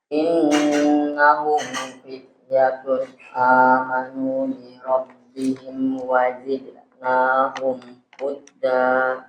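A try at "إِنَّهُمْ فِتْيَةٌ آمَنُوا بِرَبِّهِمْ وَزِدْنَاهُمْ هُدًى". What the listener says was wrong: Wazidnahum huda. Huda. Konsentrasi coba di situ. Wazidnahum. Ini hudanya tadi seakan-akan bertasydid.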